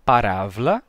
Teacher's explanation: o som de ba ele vai vai se relaxar até ficar fricativo